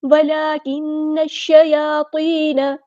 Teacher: ولکن الشیاطین، نون کو یہاں پر نون پہ آپ کو تشدید دکھ رہی ہے، نون پہ غنہ ہوگا، نون ایک الف کے برابر رکیں گے